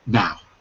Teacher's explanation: I'm about to say something new, and it's more just of a falling tone